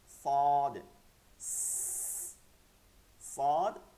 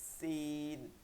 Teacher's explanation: সৎটা মোটা রাখতে হবে সিনটা চিকন রাখতে হবে